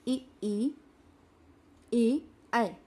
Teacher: वे स्वर जिनके उच्चारण में जिह्वा का अग्रभाग मदद करता है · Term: अग्रस्वर